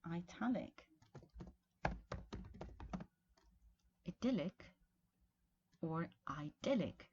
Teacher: there's a tendency in American English to use a diphthong in an unstressed I